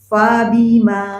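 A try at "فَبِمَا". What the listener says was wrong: Fa-nya tebal barusan. Bukan fa, fa.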